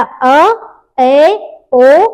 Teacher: जिसको बोलने के टाइम पे आधा मुख द्वार खुला है वो होता है अर्धविवृत स्वर